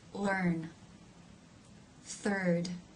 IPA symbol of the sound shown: ɜ